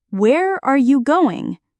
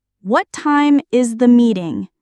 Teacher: WH questions with falling intonation. Your voice goes down at the end.